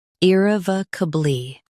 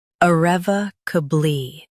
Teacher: US starts with e. UK starts with uh.